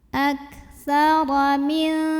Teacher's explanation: Huruf ra dibunyikan secara tafkhim karena barisnya fathah. Cara membacanya ditebalkan, pangkal lidah dinaikkan.